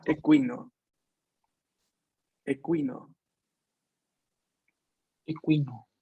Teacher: A diferencia de equino del español. La U después de la K en español tiende a no pronunciarse, mientras que la U después de la Q en italiano se pronuncia.